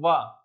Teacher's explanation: तो वह मैंने बताया था आपको कैसे बोलते हैं, वाह, दांत और ओष्ठ मिलकर के आता है ना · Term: दंतोष्ठ